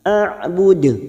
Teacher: huruf ain sukun memiliki sifat tawassut, jangan samakan dengan hamzah